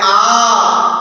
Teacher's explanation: जब हम उच्चारण करते हैं आ तो पूरी तरह से हमारा मुख जो है खुलता है, इसलिए दीर्घ आ का अगर पूछा जाए कि मुख विवर के आधार पर कौन सा भेद होगा तो इसको हम विवर्त स्वर के नाम से भी जानते हैं।